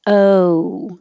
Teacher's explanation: your tongue rises to end with an oo sound and your lips round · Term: the american o